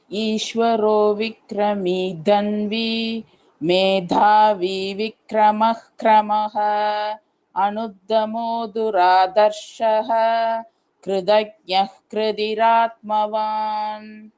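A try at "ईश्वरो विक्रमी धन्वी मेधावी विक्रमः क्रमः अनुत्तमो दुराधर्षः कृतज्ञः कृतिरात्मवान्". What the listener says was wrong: I guess you missed the two Mahapranas. Ishvaro Vikrami Dhanvi. Dha is Mahaprana there. Again, Anuttamo Duradharshaha. Dha is Mahaprana there.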